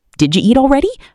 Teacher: That du becomes j. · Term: connected speech